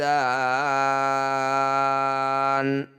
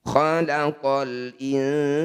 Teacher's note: Cara membacanya sa ini panjangkan 6 harokat, huruf terakhir sukunkan. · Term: mad arid disukun